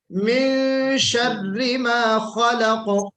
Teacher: خا حرف مستعلیہ میں سے ہے، اس میں استعلا کی صفت پیدا ہوگی، پر پڑھا جائے گا اس خا کو